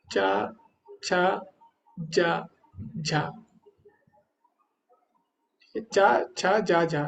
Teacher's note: जो हमारी जीवा है व जो हमारे नीचे वाले दांत है उसके पीछे लगती है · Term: तालू